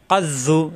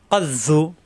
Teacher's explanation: এই জোয়া জিব্বার আগা দাঁতের আগা কিন্তু মোটা হরফ